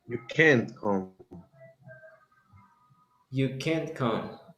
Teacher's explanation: stop the t before the explosion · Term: T is stopped